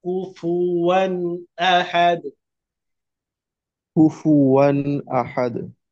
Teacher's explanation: দুইবার ঠোঁট গোল হয়ে আওয়াজ বের হবে